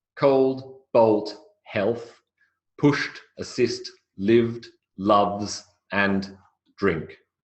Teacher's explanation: notice in every single case there is no intervening vowel sound there's no schah there's no pure vow there's no dip thong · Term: final clusters